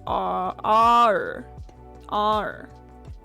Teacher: tongue so with the r with the American R it doesn't it doesn't close with the tongue at all